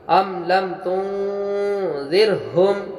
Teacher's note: را ساکن سے پہلے زیر ہونے کی بنا پہ را کو باریک پڑھیں گے